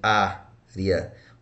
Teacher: O acento aqui, ó, eu separo área. Então, não está na última, está na penúltima. Então, se está na penúltima, eu tenho uma paroxítona.